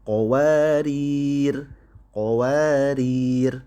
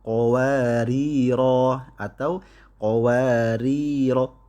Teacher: Adapun ketika dia berhenti waqaf, maka karena alifnya tidak dianggap, maka itu membuat ro-nya menjadi ya pendek ya, sehingga dia harus disukunkan. Qawarir, qawarir, bukan qawariro atau qawariro, bukan.